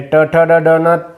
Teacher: हिरड्यांचा वरचा भाग किंवा हिरड्यांचा भाग आहे त्या ठिकाणी जीभ लागते जिभेचा शेंडा जिभानी उलटी अशी होते आणि लागते म्हणून यांना मूर्धन्य वर्ण असं म्हणतात